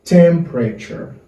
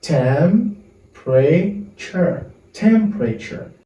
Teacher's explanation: the letter E is silent, is not pronounced